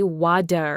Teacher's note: the tongue briefly flaps against the roof of the mouth creating a sound softer than a hard t but not quite a full d · a very distinct and pronounced T, almost a crisp pop, whereas an American speaker would almost instinctively say water with that softened D sound, making it sound much smoother and quicker . Meticulously listening for this specific T to D shift is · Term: flapped t